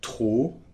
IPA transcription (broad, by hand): tro